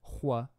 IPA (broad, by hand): ʍ